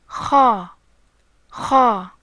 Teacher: The kha sound comes from the contact between the posterior of the tongue and the palate with vibration.